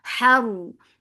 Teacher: keep ha light but raw heavy. Because there is fatha on ra.